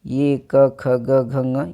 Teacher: ये क ख ग घ ङ ये सभी कंठ से बोले जाते हैं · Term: क वर्ग